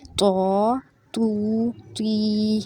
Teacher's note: तो यहाँ पे तो है, तो अलिफ़ ज़बर तो वाव पेश तू, तो या ज़ेर की, तो तू ती, यानी तो को हमने मोटा भी करना है और लंबा भी करना है।